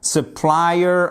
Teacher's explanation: accent tonique sur la deuxième partie, la deuxième syllabe